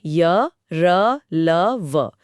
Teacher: ऐसा लगता है जैसे ध्वनि मुंह के अंदर से ही आ रही है और अंदर ही रुक सी गई है। जीभ पूरी तरह से मुंह के किसी भी हिस्से को नहीं छूती। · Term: अंतस्थ व्यंजन